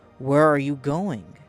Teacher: Voice falls on going.